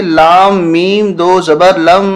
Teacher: اس الف کو نہیں پڑھیں گے، لام کو میم کے ساتھ ملائیں گے ، اور میم مشدد ہونے کی وجہ سے یہاں غنہ ہوگا۔